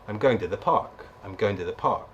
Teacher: Now what we've got there is examples of how we link things together, and how we also use words that are stressed, in this sentence going park